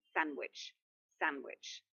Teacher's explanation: The D is lost because it's in between the two consonants.